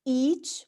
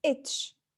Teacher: So, E is longer than E. When we say each, we take more time than itch.